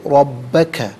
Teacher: ناظرین با پر جو ہے وہ را پر زبر ہے، را کو پر کر کے پڑھیں گے، با مشدد ہے، اسے جماؤ کے ساتھ ادا کریں گے